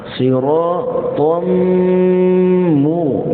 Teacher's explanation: Itu idgham. Ma'al ghunnah, beserta dengung pada mim. Jadi tahan sekejap pada mim, barulah kita sebutkan baris dia.